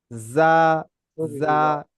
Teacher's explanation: যাটা হচ্ছে ঝিরঝিরি আওয়াজ